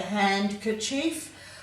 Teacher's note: Now handkerchief, the D has become silent because it's hard to say handkerchief.